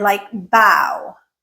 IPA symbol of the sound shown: aʊ